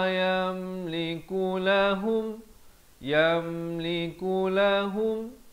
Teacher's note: izhar syafawi hukumnya, jangan dipanjangkan, sempurna saja mim mati terus masuk